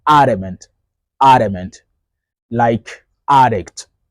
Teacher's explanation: Adamant, adamant. And that D is like a fast D.